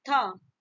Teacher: त हमारे दांत से टच हो रहा है ना, थ ये भी हो रहा है, इसको हम बोलते हैं दंत्य